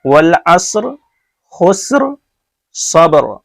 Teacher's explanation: ایک چیز اور دھیان رکھیے، والعصر خسر صبر، یہ جو را ہے تینوں کا یہ پر ہے، اس لیے کہ را ساکن سے پہلے ساکن ہے اور اس سے پہلے پیش ہے، یا اس سے پہلے زبر ہے، اس میں زبر ہے، تو یہ تینوں را جو ہے پر ہے.